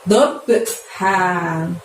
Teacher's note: saat mengeluarkan suara untuk huruf H di sini dari tenggorokan kita bagian tengah ya. Jadi lembut ya suaranya ya.